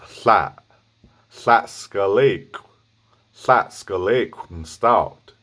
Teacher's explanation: you're doing a belted L sound, with the glottal push